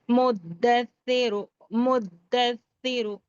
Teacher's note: پھر را کو پورا اور موٹا اور جلد پڑھنا ہے